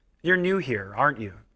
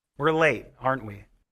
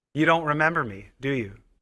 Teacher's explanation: falling intonation that is only like comments like it's obvious I don't know if I if I explain myself but okay